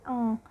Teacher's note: Fonem eng adalah bunyi nasal velar bersuara.